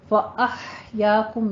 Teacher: حا وسط حلق سے ادا کرنی ہے، باریک سانس کی سی آواز لے کر آئیے